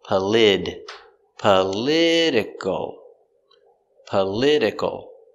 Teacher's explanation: we change the T to the D sound in this word.